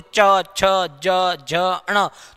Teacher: जिह्वा बार बार हमारे ऊपर जो है ये दांतों के पीछे वाले भाग को स्पर्श करती है